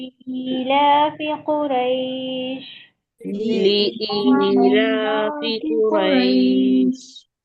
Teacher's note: یہاں پر یا مدہ ہو رہا ہے، ایک الف کی مقدار کھینچیں گے